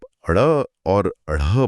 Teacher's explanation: जब आप अड़ और अढ़ बोलते हैं, जैसे सड़क या पढ़ाई में, तो जीभ मुंह की छत पर जाकर एक जोरदार झटके से नीचे गिरती है। अच्छा, वो जो फ्लैप होता है। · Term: फ्लैप या उच्छिप्त